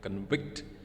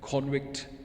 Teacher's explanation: For the noun convict, the first syllable is spoken with greater force, while the second syllable is less loud. But for the verb, the second syllable is spoken with greater force